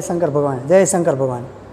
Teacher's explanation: તાલવ્ય ભાગમાં આપણે આંગળી નાખીએ અને ઉલટી જેવું થવા આવે અને એ જગ્યાએ જીભ લઈને બોલીએ ને તો એ શ થાય